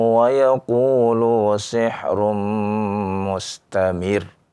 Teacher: ketika kita baca mustamir ya kita tekan ya, kita naikkan suara ya lebih tinggi karena di sana ada huruf yang bertasydid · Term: nabr